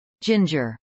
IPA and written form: ˈdʒɪndʒɚ (ginger)